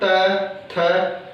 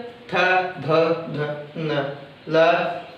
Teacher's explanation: ऋतु लक्षणाम दंता यानी ली, तवर्ग, त, थ। जिह्वा दांतों को स्पर्श कर रही है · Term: दंत्य वर्ण